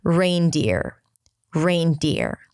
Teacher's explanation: Rain, just like the word rain. And then deer, that's again a high E sound, deer, and then an R.